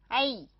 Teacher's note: 它是合口符的自然延伸，发音长度为合口符的三倍左右，也不是绝对的。这是一组，第二组元音符号，第三组元音符号叫软音符▁，alain▁alain▁软音符。第三组元音符号它含两个软音符号，两个软音符号。软音符号呢也是由符号和字母合成的，也就是每一个软音符号中都含有一个表示软音的字母，表示软音的字母。第一个软音符号▁，a，▁ 它发音的时候口型由半张转至扁平 ，它是开口符与字母▁，aliyaw▁的静音，一。的合成，这个字母和长音符里面的字母不同，长音符里面的三个字母自己不发音，只是作为延长音的符号，而在这里软音符这个字母是本身是发音的，也就是发自己的辅音本音，这个字母本身发一，开口符加上一变成▁a。这个发音符号呢，介于国际音标的▁i▁与▁a▁之间▁，i▁比▁a▁张